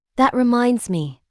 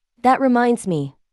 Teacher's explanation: Notice how the stress falls on minds and me.